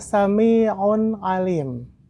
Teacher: Ada tanwin domah bertemu dengan huruf ain. Maka dibacanya adalah ijhar atau jelas.